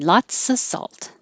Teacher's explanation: The key here is lotsa. Anytime you have lots of, you don't have to have a perfect of. You can have lotsa.